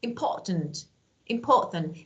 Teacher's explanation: I cut the sound in my throat